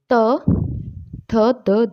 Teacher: जिन व्यंजनों के उच्चारण में जीवा की नोक ऊपरी दांतों को स्पर्श करती है वो दंत्य व्यंजन कहलाते हैं।